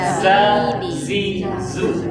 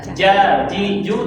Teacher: Bedanya ini za, nggak boleh nempel. Kalau ja, nempel.